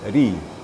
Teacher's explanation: Ra apabila baris di bawah lebih tipis. Tipis sekali.